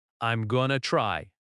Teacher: Notice the stress on try. The word going to is quick and light. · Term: reduction